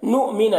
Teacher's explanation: यहाँ पर हमज़ा साकिना है नुमिना में, तो इसे झटका लगाकर पढ़ेंगे।